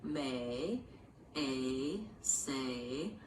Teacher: It means it glides from one position to another. It is one sound, a, but I'm moving from a more tense eh into a more relaxed I position, a. So for a lot of people, what they tend to do is in your native language, you might have just eh, just a single sound for this. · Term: diphthong